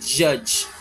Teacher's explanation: Magsisimula ka sa plosive kasi hindi naman mapropronounce yung J sound kung hindi ka mag-close. Tapos, i-release mo through a friction. Judge. Same dito sa, church. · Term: affricate